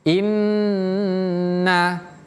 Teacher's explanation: Kalau tasdid tahannya lebih lama dari huruf yang lain.